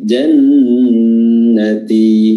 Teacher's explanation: Nun tasdid di sini diberikan durasi yang lebih.